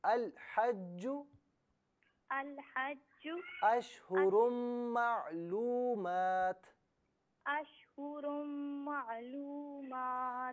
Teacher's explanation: معلومات میں جو واو مدہ ہے نا اس سے ایک الف کی مقدار کھینچیں